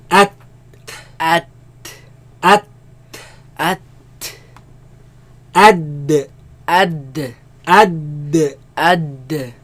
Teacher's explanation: They come from the roots of the tongue against the roots of the upper teeth. So let's put the A sound before it.